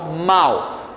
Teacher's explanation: Eu pronuncio com muito mais força primeiro o A, o som do A, então mal. O som do U, que é uma semivogal, ele aparece no finalzinho da palavra de maneira bastante fraca. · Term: ditongo decrescente